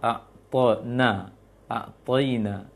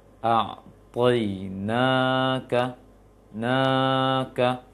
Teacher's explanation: Kemudian yang kedua a'tona, a'toina, na-nya panjang. Itu panjang biasa.